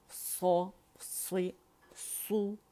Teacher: مخرج پہ جائیں گے کمپلیٹ رولنگ کریں گے سو کی